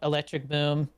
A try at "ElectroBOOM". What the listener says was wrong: Electro boom, not electric. You gotta make sure it's correct. Electro boom.